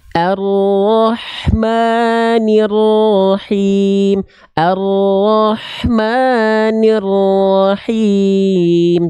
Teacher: Maknya jangan kepanjangan. 2 harokat.